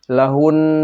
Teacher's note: maka cara mewaqafkannya adalah suara hun. Ditekan dan ditahan dua harakat. Jadi kalau dia berhenti, lahun.